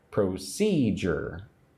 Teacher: Again, three syllables. Again, put the emphasis on number two.